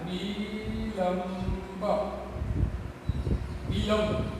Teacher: બમાં મ આવે એટલે અનુસ્વારનો મ કરી દીધો